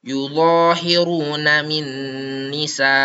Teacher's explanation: Cara bacanya dimasukkan sambil berdengung selama satu alif atau dua harakat. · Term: idgam bighunah, idgham bi gunnah